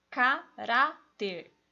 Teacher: O Ra é o mais forte, a penúltima, termina em R. Tem essa regra, põe acento.